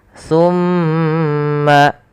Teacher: yaitu suara mimnya ditahan sepanjang 2 harokat. Summa, baru alirkan. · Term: gunnah